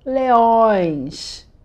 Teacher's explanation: Tira só o N e faz um som mais anasalado.